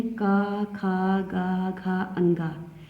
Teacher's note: का से लेके अंगा तक का उच्चारण स्थान कंठ होता है और एक का वर्ग की श्रेणी में आते हैं और इनकी जाति होती है कंठ।